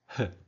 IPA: h